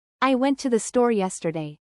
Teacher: Well, it sounds like you're just stating a fact with absolutely no emotion or emphasis. There's no rise and fall in your voice, it's just flat. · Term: flat, monotone voice